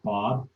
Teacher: So when you say a word like Bob, the mouth pops open on the vowel, but it takes its time getting back down